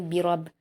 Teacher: रब पर ज़बर है पुर पढ़ेंगे और बा को ज़ेर है।